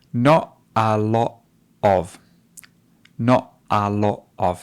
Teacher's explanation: Do you notice how she drops the T? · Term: glottal stops